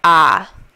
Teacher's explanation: letter A doesn't make an a sound it makes an ah sound